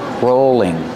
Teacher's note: Use a long O sound for row, rolling. And the L is between vowels, so it's a light L.